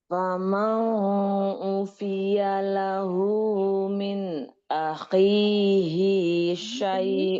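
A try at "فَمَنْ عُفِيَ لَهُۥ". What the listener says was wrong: famang, tapi faman. Tidak ada kolkolah, tidak ada ifa. Faman izhar. Faman ufiya lahu. Kemudian tadi ya coba lahu, hunya dua Ada mat silah sugro. Lahu dua.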